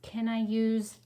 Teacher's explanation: it's making the s sound like a z